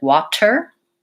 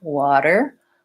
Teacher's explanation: it's making the difference between using an aspirated T like water versus using a flap T like water. What I like to think about it as kind of a light D sound.